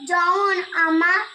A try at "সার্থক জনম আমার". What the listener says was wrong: ওহ, জমন নয়, জনম।